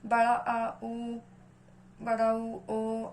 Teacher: जीभ का जो पश्च भाग है वो उठता है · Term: पश्च स्वर